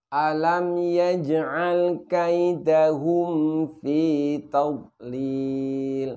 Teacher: ketika mim sukun bertemu dengan Va maka rapatkan terlebih dahulu kedua bibir kita jangan sampai ketika kita mengucapkan mimpi beli Kita ini kurang rapat